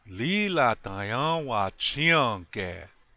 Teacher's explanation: time Lee lotta y'all watch hyung care very good say it so it flows yeah like it flows like water it sounds like it's one long word